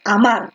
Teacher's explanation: La mayor fuerza de voz está en la última sílaba. Como está en la última, esta es una aguda.